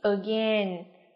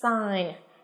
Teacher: đều không có sự xuất hiện âm g ở trong phát âm của chúng ta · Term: âm câm